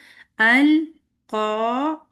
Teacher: ठीक है, अल क़ा, काफ हैवी है लेकिन इसको को मुंह नहीं गोल करके करना, को नहीं हो, ओ की आवाज नहीं है।